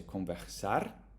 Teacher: In the Sao Paulo region, you would say conversar, like the American R, conversar.